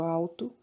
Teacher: Muitas vezes o L tem o som de U, mas no crioulo eles vão manter, né, aquilo que veio do português de Portugal, no qual o L ele tem o seu fonema próprio.